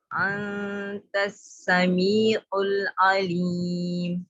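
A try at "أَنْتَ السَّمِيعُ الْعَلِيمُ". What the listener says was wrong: आइन को तो आइन में सख्ती नहीं लाए। समीउल वाले आइन, अंतस समीउल अलीम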